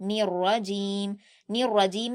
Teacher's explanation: را پر آپ کو سختی بھی کرنی ہے اور آپ کو را کو پر بھی پڑھنا ہے، موٹا پڑھنا ہے